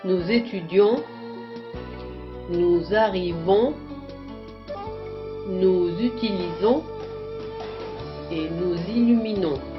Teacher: son nasal et il ne faut pas prononcer le N